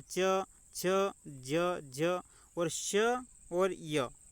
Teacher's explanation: तालव्य के द्वारा उच्चारण इनका किया जाता है। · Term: तालव्य व्यंजन